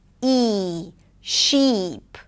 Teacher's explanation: The tense 'ee' is longer. The tongue is higher, the lips pull to the sides.